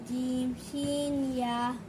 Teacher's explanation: জিহ্বার মধ্যখান তার বরাবর উপরে তালুর সঙ্গে লাগিয়ে